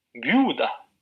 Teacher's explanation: si pronunciamos viuda, entonces la vocal que tiene más sonoridad es U